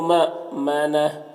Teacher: یہاں پر حمزہ ساکنہ ہے تو جھٹکا لگے گا، یہاں پر وقف کریں گے تو یہ الٹا پہ سکون سے بدل جائے گا، تو اس طرح سے پڑھیں گے۔